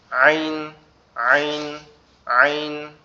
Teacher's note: ওই জায়গা থেকে কি হবে, আইনটা উচ্চারিত হবে একটু গলা চেপে, একটু বসা বসা আওয়াজে